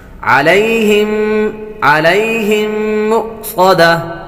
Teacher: یا حروف لین میں سے ہے اس لیے اس کو لمبا نہیں کریں گے